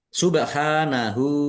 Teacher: Subhanahu ba sukun bacaan qalqalah dibaca memantul ditampakkan pantulannya. Subhanahu ha fathah berdiri mad thobi'i panjang dua harakat. Domir ha domah terbalik mad silah qosirah dibaca panjang dua harakat. · Bak sukun, bacaan kolkolah. Dibaca memantul, ditampakkan pantulannya.